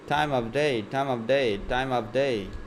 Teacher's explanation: Other times, we might delete the V sound in of.